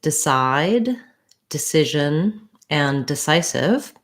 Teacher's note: i don't want d side that would be too much stress the vowel is reduced it's not a clear vowel because it's an unstressed syllable · all of these words have second syllable stress which means that these letters d e are short and unstressed